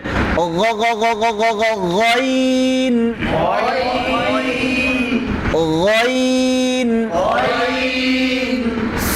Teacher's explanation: অনেকে বাংলার গ দিয়ে বলে গইন, হবে না, গলা থেকে বলতে হবে।